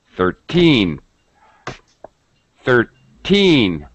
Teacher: the word stress is on teen 13 it's higher pitch it's stretched it's a little longer sound